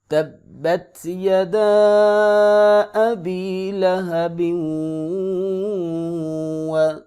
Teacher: تنوین کا واو کے ساتھ ادغام ہوگا اور ادغام مع الغنہ ہوگا، یہاں پہ غنہ کریں گے، ناک سے آواز کو نکالیں گے